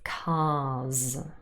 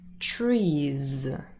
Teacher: if our vocal cords are already vibrating we might as well keep them on and they continue to vibrate and therefore we say z